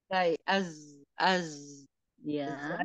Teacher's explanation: ujung lidah hampir menyentuh gigi seri bagian bawah Iya bertemu ya ujung lindah hampir bertemu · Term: huruf z